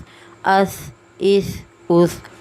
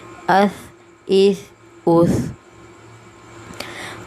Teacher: حمزہ تھا زبر اس، حمزہ تھا زیر اس، حمزہ تھا پیش اس، اس اس اس۔ بالکل نرمی سے ادا کرنا ہے، دونوں دانتوں کے درمیان میں زبان رکھ کے سا کی ادائیگی کرنی ہے، ٹھیک ہے۔ ایسے اس اس اس۔